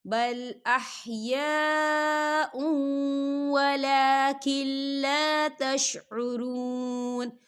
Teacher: حمزہ کے اوپر تنوین ہے اور تنوین کے بعد واو آ رہا ہے، اور واو جو ہے حروف یرملون میں سے ہے، تو یہاں پر ادغام ہوگا تھوڑا سا غننے کے ساتھ